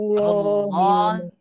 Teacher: ini dibaca, jangan sampai dibaca tarqiq, ya, tapi dibacanya tafkhim. Tebal.